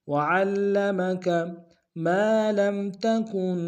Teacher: وعلم میں عین کو لام کے سامنے آئیں گے، شدہ زور دیں گے